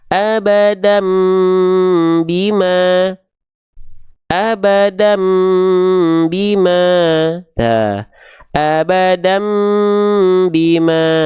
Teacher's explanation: Ini ya, fatatain ketemu sama huruf ba dikasih tanda kecil mim kecil, itu namanya iklab. Samarkan dengungkan si bunyi an ke bunyi am 2 harokat.